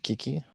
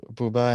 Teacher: the actual sound you need to produce like Kiki is an unvoiced plosive. It's a pretty sharp sound in the front of your mouth, where Bouba is more of like a rounded back vowel